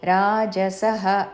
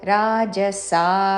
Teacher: రాజసః అనకూడదు రాజసా సా దీర్ఘము తర్వాత విసర్గ